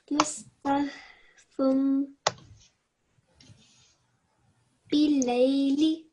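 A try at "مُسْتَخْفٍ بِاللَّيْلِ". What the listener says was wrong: What sound do we need to make here? fum or is it fim? Fim. So try once more because it sounds a little bit like you're saying fum.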